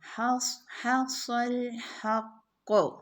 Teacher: حصل حق، دیکھیے صاد ساکن ہے اور اس سے پہلے لیٹر پہ زبر ہے، فتحہ ہے تو یہ کافی موٹا ادا ہوگا